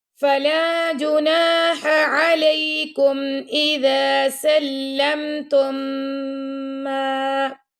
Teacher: اب تا کو ہم نے میم سے ملا دیا، یعنی پہلا میم چھوڑ کے دوسرے میم سے ملایا اور میم پہ ہم نے غنہ کیا